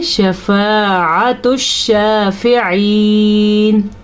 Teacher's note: शफ़ाअत शाफ़िईन अलिफ से पहले ज़बर है तो ये अलिफ मद्दा है, तो इसे खींच के पढ़ेंगे। आइन जो है उसको हलक से निकालेंगे